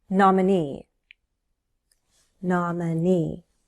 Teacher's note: Stress is on the last syllable.